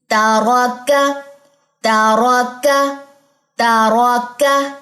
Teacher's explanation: کاف بھی باریک، تا بھی باریک، درمیان میں را موٹا ہے